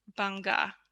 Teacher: Indonesian people also pronounce the b a little uh soft